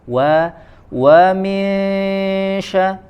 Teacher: dimulai dengan memanjangkan kedua bibir ya walaupun fathah tapi disempurnakan dulu manyunkan dulu kemudian baru dibuka · Ikhfa juga salah satu bacaan yang harus didengungkan ya, ziyadatul gunnah, harus dipanjangkan ketika bacaan dengungnya.